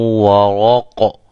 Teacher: اس کو ہم قاف کو قلقلہ کر کے پڑھیں گے، یہ را موٹی ہوگی وقف کے دوران کیونکہ را یہ ساکن ہو جائے گی، پھر ساکن را سے پہلے بھی حرف ساکن ہوگا اور اس سے پہلے پیش ہے۔